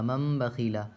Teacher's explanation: تو نون کو میم سے بدل کر غنہ اور اخفا کے ساتھ پڑھیں گے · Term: اقلاب